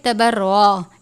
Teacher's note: را کے اوپر تشدید بھی ہے اور زبر بھی ہے، را کو پر کر کے پڑھیں گے